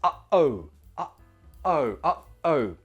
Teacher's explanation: Notice your throat closes in the middle. When your throat closes, it stops the airflow, stops the sound coming out. That stoppage replaces the T sound. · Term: glottal T